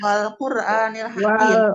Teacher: kemudian ro-nya dibaca tafhim karena huruf sebelumnya berharokat domah ya